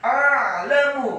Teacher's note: Wa ana a'lamu, kata a'lamu, alifnya dibaca fathah satu harokat, kemudian ainnya dibaca sukun ditekankan keluar dari tenggorokan